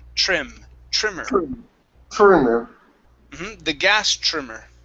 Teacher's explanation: now with the tr you want to use a c-h-r instead of trim trimmer it's true trim trimmer the gas trimmer